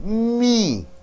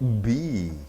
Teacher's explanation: M like B sound, but it comes through the nose.